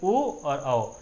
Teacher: ओ कंठ से ध्वनि निकल के आपके होठों का इस्तेमाल भी हो रहा है, इसलिए ओ और आओ का जो उच्चारण स्थान हो जाएगा वो क्या हो जाएगा, कंठोष्ठ हो जाएगा।